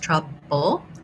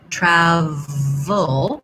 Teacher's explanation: that we were just talking about with apple, travel, and then the V sound, v, you want to make sure that for the trouble, for the B, your lips are closed, the air is stopped and released, trouble, travel, the V sound should be able to continue.